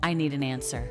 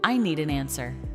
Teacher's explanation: The final consonant in need connects with the next word.